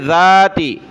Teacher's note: ذال پر زبان نکالیں